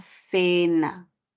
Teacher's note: hace referencia al fonema fricativo interdental, ¿no? Eso ocurrirá cuando la vocal que le sigue es una E o es una I, ¿no?